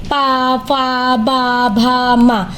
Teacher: प वर्ग प फ ब भ म ये ओठ की मदद से मतलब जब ये बोलते हैं तो हमारे ओठ एक दूसरे से टकराते हैं। मतलब पा जो है वो ओट्स की सहायता से बोले जाते हैं।